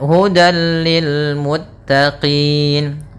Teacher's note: Maka tanwin dia akan dimasukkan kepada huruf lam, tapi tidak boleh ditahan, tidak boleh hudal, akan tetapi hanya idgham saja, dan dia termasuk idgham kamil yang sempurna. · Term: idgham bila gunnah